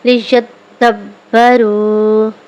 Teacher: دال اور با حروف قلقلہ میں سے ہے یہ خوب دباؤ کے ساتھ جماؤ کے ساتھ ادا ہوگا